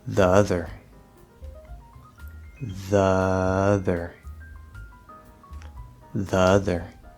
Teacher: We're going from a schwa sound, a true unstressed schwa in the, and then we have the stressed schwa, the not true schwa, upside down V, in the word other at the start of the word.